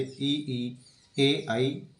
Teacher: अग्र स्वर हैं। अग्र जीभ के आगे के भाग से बोले जाने वाले ई, ए, आई